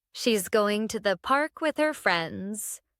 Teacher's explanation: Notice how going to sounds like gonna when I say it naturally. This is a common reduction in English.